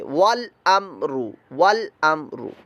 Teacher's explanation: واو متحرک, لام ساکن, حمزہ متحرک اور میم ساکن آ گیا, اور میم ساکن کے بعد را آ گیا, یعنی با بھی نہیں ہے اور میم بھی نہیں ہے, یہ را ہے. لہذا یہاں پر اظہار شفوی کا قاعدہ ہے, غنہ نہیں کریں گے